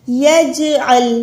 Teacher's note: جیم پہ کلکلا کریں، عین کو لام کے ساتھ ملائیں، ہا کو لمبا کریں